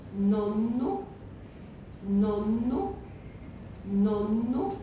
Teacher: That N is lengthened. It's about twice as long as it would be if it were not a geminate. That's called a geminate.